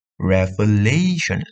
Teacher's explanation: lay itu kan ditekan di kedua akhir